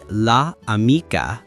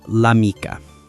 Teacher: So, Italian does something brilliant. It drops that first vowel. The a and la just falls away and the apostrophe jumps in to fill the gap.